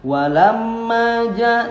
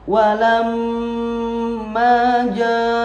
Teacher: Walamma ada gunnah agak lamaan. Jadi jangan hanya lewat seperti walamma ja, tapi walamma ja, ma dua harokat, mad asli atau mad tabi'i namanya.